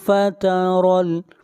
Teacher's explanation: را کو موٹا پڑھیں گے، را کے اوپر زبر ہے